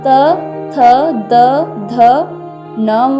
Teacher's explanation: उच्चारण स्थान दांत और वर्ण का नाम दंत्य।